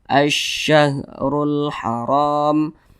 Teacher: Makanya alif lam syamsiyah itu biasa disebut juga dengan idgham syamsiyah karena cara membaca huruf lamnya itu diidghamkan. Jadi huruf lamnya ini dia tidak dibaca